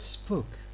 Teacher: In the word spoke, this P being in this position after S, normally it is unaspirated. It takes this realization.